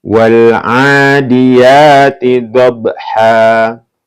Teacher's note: Dob ini qalqalah ya, karena ini huruf ba termasuk qalqalah ya, maka dipantulkan ya